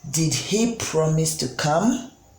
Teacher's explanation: You can see that the question part of this sentence or statement goes up at the end. The pitch goes up at the end.